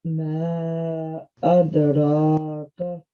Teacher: we have to make sure that the meme is longer than this ra